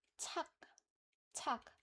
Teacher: When a letter ends with the kio kio at the end although in romanization uh we write the k as an ending but it doesn't have any aspirated sound but it has the stopping sound